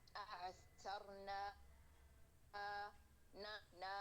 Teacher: آواز ہماری الف مدیہ کی نون کے ساتھ نہیں شامل ہوئے گی. نون کو پڑھنے کے بعد فوراً الف مدیہ کو منہ سے نکالیں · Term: انفتاح